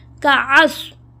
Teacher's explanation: یہاں پہ آ گیا عین، عین کو حمزہ میں کنورٹ نہیں کرتے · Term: عین کی پروننسیشن